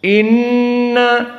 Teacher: Nun musyaddadah wujubul gunah Inna dari hidung